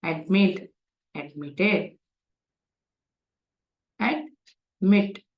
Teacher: admit, two syllabled word, wherein mit is given stress, அழுத்தம் கொடுக்கப்பட்டுள்ளது.